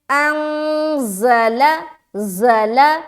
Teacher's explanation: سیٹی کے ساتھ ادا کریں کیونکہ زا کے اندر یہ سختی والا بھی حرف ہے اور اس کے اندر سیٹی والی صفت پائی جاتی ہے · یہاں پھر اخفا کر رہے ہیں کیونکہ آگے آنے والا حرف کیا ہے؟ زا ہے